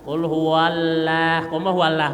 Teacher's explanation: tebalkan lamnya huallah lam ditebal